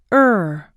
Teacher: tongue your lips should be slightly open and a bit rounded the ER is tense and long in duration tension should be felt in the jaw lips and tongue